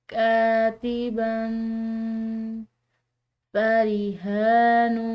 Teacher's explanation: ہے اخفاء کے ساتھ۔ اس کو ہم پڑھیں گے کاتباً فریحان، یہاں پر ہا کے اوپر کھڑی زبر ہے، اس کی وجہ سے ہم نے اس کو کھنچاؤ دیا ہے